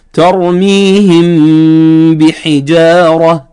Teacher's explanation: لأن الميم والباء مخرجهما كلاهما من الشفتين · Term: الإخفاء الشفوي